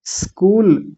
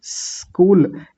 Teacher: यानी ये जो स होता है ना, ये वाला, जब इस स को हम बोल रहे होते हैं तो हमारे दांतों में से वायु बाहर आती है, हवा बाहर आती है। तो पहले आप ऐसा बोलिए, ऐसा करके हम आवाज निकालते हैं ना, तो बिल्कुल हल्की सी दांतों में से आवाज निकाल करके आधा स बोलेंगे, और साथ ही कूल बोल देंगे।